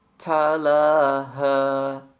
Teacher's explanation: ucapkan bunyi huruf ta sesuai dengan sifatnya yaitu hams